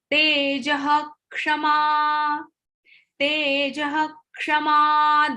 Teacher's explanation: the pronunciation of visarga is ho